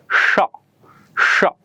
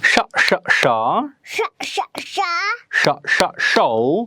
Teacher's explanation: This is a voiceless consonant sound that you hear at the beginning of the word show, at the middle of the word fashion, and at the end of the word dish. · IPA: /ʃ/